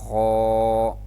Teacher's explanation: خو خو کو ادا کرتے ہوئے منہ کو گول کرنا اور اس کو تھوڑا سا موٹا پڑھنا ہے۔